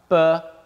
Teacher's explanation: and what's key to note about this is two things firstly burr is not voiced and secondly it's not aspirated